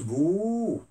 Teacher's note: إذا وضعت الواو أصبحت بو طويلة